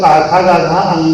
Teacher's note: अंगा को हम लोग कंठ से भी बोलते हैं और अंगा को हम लोग नासिका से भी बोलते हैं।